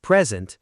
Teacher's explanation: Stress on the first syllable, so that's the noun, meaning a gift.